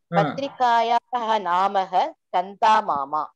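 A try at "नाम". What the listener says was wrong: So Namaha, there is no Visarga. It is only Nama. Patrikayaha Nama Sandeshaha patrikayaah nama chandamama.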